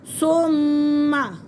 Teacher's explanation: मीम मुशद्दद और मुशद्दद हर्फ अपने पहले वाले हर्फ के साथ मिलकर पढ़ा जाता है